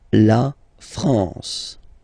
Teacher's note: A-N here, nasal en.